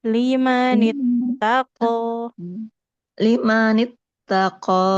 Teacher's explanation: Qof-nya tebal tidak boleh mengalirkan nafas.